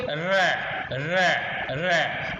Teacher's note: अब देखिए र, जीभ हमारी बिल्कुल ऊपर को घूम गई है, तो ये है मूर्धा